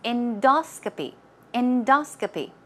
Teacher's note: stress goes right there on the second syllable